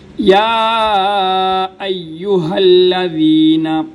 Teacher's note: کھڑی زبر کو ایک الف کی مقدار میں لمبا کیا جاتا ہے، اور یا کے اوپر جو مد ہے اس کو 3 الف کی مقدار لمبا کیا جاتا ہے۔ الف کی مقدار کا مطلب یہ ہے کہ جتنے وقت کے اندر ہم الف کو پڑھتے ہیں اتنا ہی اس مد کو لمبا کرنے میں وقت لگنا چاہیے۔